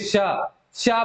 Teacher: हमने भले इसको तालव्य पढ़ा है, ठीक है, लेकिन जो संघर्षी होते हैं वो हवा के स्पर्श को भी हमने उच्चारण स्थान माना, लेकिन जो संघर्षी होते हैं उनका उच्चारण करके आप देखिए, श कहेंगे तो जिह्वा और तालु के बीच में हवा जो है छूते हुए, एकदम रगड़ते हुए जाती है